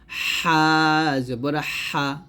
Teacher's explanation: এই হাটা আমরা গলার মাঝখান থেকে চাপ দিয়ে চিকন করে বলবো হা জবর হা এরকম।